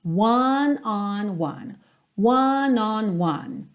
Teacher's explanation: começa fechadinho, depois aberto, depois fechadinho de novo